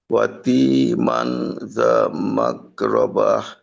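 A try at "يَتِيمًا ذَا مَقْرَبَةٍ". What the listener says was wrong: আচ্ছা, এখানে ওয়া হয়ে গেল না? ইয়া, ইয়াতীমাং। আচ্ছা, এখানে দুইটা বিষয়। একটা হলো জালকে তার নিজ মাখরাজে রাখা, রা। আর মাক, কফকে আরেকটু ধাক্কা খাওয়াইতে হবে। মাক, মাকরাবা, যা মাকরাবা।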